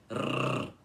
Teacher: depois o R enrolado, encostando a língua nos dentes e tremendo, tá? Assim, rrr, sem arranhar a garganta na hora de pronunciar isso, ok?